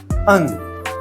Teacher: अंग का जो उच्चारण स्थान होता है वह नासिका से बोलते हैं। नाक से बोला जाता है नासिका।